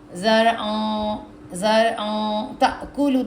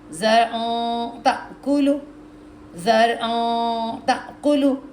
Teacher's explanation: زرعن تأکلو, زرعن نہیں کہنا ہم نے, نون کی وائس نہیں آئے گی, نون کی وائس ناک میں جائے گی. زرعن تأکلو, دیکھیں آپ کی زبان نا نیچے کے دانتوں کو چپک جائے گی. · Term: اخفا غنہ